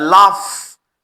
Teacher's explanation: अगर हम एफ को प्रोनाउंस करें तो एफ यहां लाफ, इसमें यहां वाइब्रेशन नहीं है